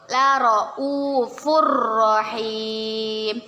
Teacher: Tanwin bertemu dengan huruf ro. Kita baca, kita membacanya dengan dimasukkan ke huruf ro tapi tidak berdengung